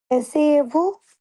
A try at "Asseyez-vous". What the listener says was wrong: না, এসএইয়ে না, এসএইয়ে আর একটা হচ্ছে আসেইয়ে, হ্যাঁ? আসেইয়েভু।